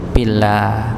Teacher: Lafaz Allah kalau dia sebelum lafaz Allah itu kasrah maka dibaca tipis · ketika lafaz Allah sebelumnya kasrah maka jangan ditebalkan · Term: ditipiskan